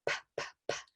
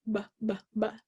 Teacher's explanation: the only difference is that the P is a voiceless sound, p, p, p, where our vocal folds are not vibrating, and B is a voiced sound where our vocal folds are vibrating